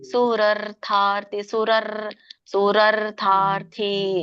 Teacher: ಇಲ್ಲಿ ನಿಮ್ಗೆ ಎರಡು ರಗಳು ಬರುತ್ತೆ. ಸುರಾರ್ಥಾರ್ಥಿ ಅಂದ್ರೆ ಸುರ ಹೇಳ್ಬಿಟ್ಟು ಆಮೇಲೆ ಮತ್ತೆ ಒಂದು ರ ಹೇಳ್ಬೇಕು, ಯಾಕಂದ್ರೆ ಮುಂದೆ ಅರ್ಕಾವಳಿ ಇದೆ ಥಕ್ಕೆ.